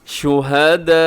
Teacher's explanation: حمزہ کے اوپر وقف ہے تو ذرا جھٹکے سے وقف کرنا ہے رکنا آپ نے.